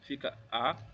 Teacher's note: Como separando água, fica água, certo? Onde o U é a semivogal mais o A que é sempre vogal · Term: ditongo crescente